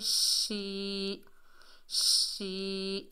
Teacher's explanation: شین کے نیچے زیر ہے، آگے یا ساکن ہے، یہ یا مدہ ہے، ایک الف کی مقدار کھینچ کر پڑھیں گے۔